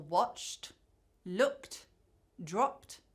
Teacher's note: ed is pronounced /t/ after verbs ending in a voiceless or unvoiced sound. So this means there is no vibration in the vocal cords